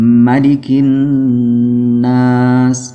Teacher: নুনের মধ্যে তাসদীদ এটা ওয়াজিব গুন্নাহ করতেই হবে